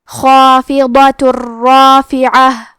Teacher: خا کی ادائیگی حلق کے اوپر والی حصے سے ہے